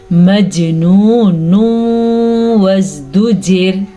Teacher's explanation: جب کبھی نون ساکن یا نون تنوین کے بعد واو، یا، نون، میم، ان 4 میں سے کوئی سا بھی حرف آ جائے تو ادغام بالغنہ ہوتا ہے، دونوں کو آپس میں ملا دیتے ہیں اور غنہ بھی ادا کرتے ہیں